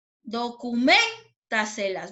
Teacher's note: ¿Dónde sonó más fuerte? En la sílaba men, ¿cierto?